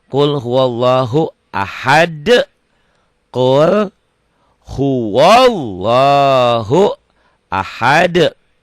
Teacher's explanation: Qul kauku qul kaf wadomahku qul huwallah. Ini lafaz Allahnya tebal, tafhim. Kenapa lafaz Allahnya tebal? Karena sebelum lafaz Allah baris atas.